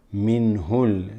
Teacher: this ha with a dhamma is going to go straight into the lam with sukun